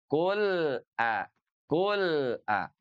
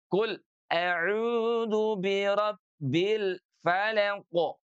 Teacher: Dia harus mengalir tapi tidak sepenuhnya mengalir. Karena sekali lagi huruf lam itu sifatnya adalah tawassut.